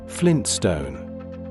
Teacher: In connected speech, the tongue touches the ridge behind the upper teeth briefly and then moves quickly into the S. The transition is fast. · Try saying it naturally, at a normal conversational pace. The first T, the one after the N, tends to be very lightly pronounced. In connected speech, the tongue touches the ridge behind the upper teeth briefly and then moves quickly into the S.